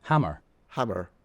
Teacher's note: the Irish pronounce their Rs